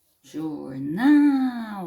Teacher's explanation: é a última sílaba forte então a gente chama de oxítona